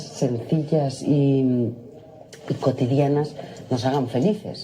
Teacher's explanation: she pronounced her S's with TH